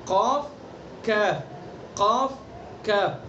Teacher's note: اور کاف زبان کی جڑ سے کچھ اوپر کا حصہ، یعنی یہ مثلاً یہ جڑ ہو گئی، یہاں سے ہم قاف کو ادا کر رہے ہیں.